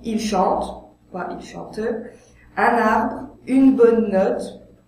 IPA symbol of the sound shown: ə